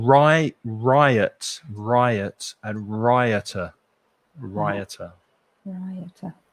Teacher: it has a y sound in it that isn't there in the letter